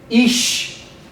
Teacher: One syllable word, that's a hirik yod, which is very long I or E in Hebrew.